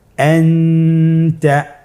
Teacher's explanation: ইকফার হরফ। তাহলে এখানে আমাদেরকে নুন সাকিনকে লুকিয়ে গুণনা করে পড়তে হবে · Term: ইখফা